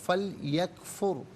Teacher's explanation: फल यकफुर में रॉ साकिन माक़बल फ़ा पर पेश है, रॉ साकिन को पुर करके पढ़ा जाएगा।